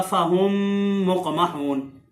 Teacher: پہلی میم ساکن ہے تو اس کو دوسری میم میں مدغم کر کے ادغام کر کے غننے کے ساتھ یہ پڑھی جائے گی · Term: ادغام شفوی